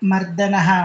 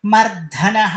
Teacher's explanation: ಅಂತ ಎಲ್ಲೆಲ್ಲ ಬರುತ್ತೋ ವಿಷ್ಣು ಸಹಸ್ರನಾಮದಲ್ಲಿ everybody ಹಯಾಸ್ to say ಮರ್ದನಹ only ಮಹಾಪ್ರಾಣ ಅಲ್ಲಿ ಹಾಕಂಗಿಲ್ಲ ಅಲ್ಪಪ್ರಾಣದಲ್ಲೇ ಇರಬೇಕು ಮರ್ಧನಹ ಅಂತ ಕೆಲವರು ಹೇಳ್ತಾರೆ there is ನೋ word in Sanskrit dictionary